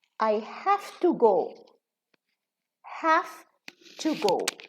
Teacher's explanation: We reduce the V in have, because the T is voiceless.